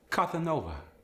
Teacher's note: If you're a native Spanish speaker from Spain and you're speaking Castilian style, the S gets the TH sound. For example, Casanova becomes Cathanova.